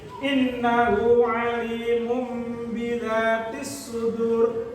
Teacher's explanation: Bacaan iklan dibaca 2 harokat dengan cara berdengung dan membalikkan nun mati atau tanwinnya menjadi mim